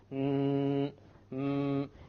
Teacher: and prolonged or sonnet m prolonged mmm if you do this you will find that the sound comes from the nose